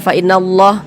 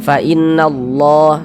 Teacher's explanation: Huruf lam jalalahnya tuh dibaca tafkhim. Fa innallah.